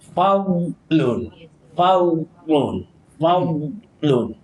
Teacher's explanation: huruf dad dia makhraj dia tepi lidah